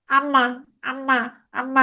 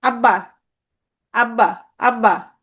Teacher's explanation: আমি যখন আম্মা বলতেছি তখন কিছু বাতাস নাক দিয়েও বের হয় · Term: নাসিক্য ধ্বনি